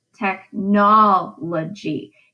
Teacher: the pattern for that word is unstressed stressed unstressed unstressed